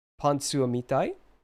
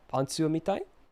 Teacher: If you use intonation, you can just say pantsu o mitai. Like, you have that rising intonation, right, with the want form, so it's already a question at that point